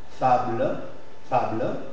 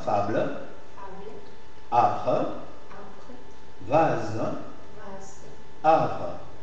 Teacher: en position tonique et suivie de consonne, on prend quelques secondes extra pour bien prononcer le A, pour bien marquer la prononciation. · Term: prononciation plus allongée